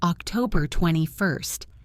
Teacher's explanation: October 21st becomes October 21st. The T in 20 blends into the F of first.